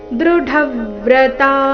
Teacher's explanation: ದೃಢವ್ರತಾಹ ದೃಢವ್ರತಾಹ ಈ ಶಬ್ದ ಡ ಮಹಾಪ್ರಾಣ ರಸ್ವ ಅದರ ಮೇಲೆ ಆಘಾತ ಬರಬೇಕು ತ ದೀರ್ಘ ಹೇಳಿ ನಂತರ ವಿಸರ್ಗದ ಉಚ್ಚಾರಣೆ ಹ ಎಂದು ಹೇಳಬೇಕು